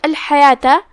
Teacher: حا کی ادائیگی حلق کے درمیان والے حصے سے ہے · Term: حرف الحا